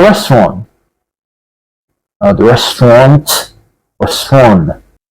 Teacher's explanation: the Americans do not pronounce that t sound clearly that's why we say I like to go to a restaurant